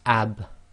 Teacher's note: there's a slight echo where the dry portions of your lips have to separate in order to complete the sound